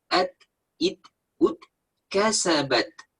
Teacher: Kalau kasabat itu seperti huruf C. Jadi bunyi yang menyusul huruf ta sukun itu bunyi yang ada jeda, tapi jedanya sangat singkat. At, ketika masih nempel di belakang gigi itu nggak ada bunyi.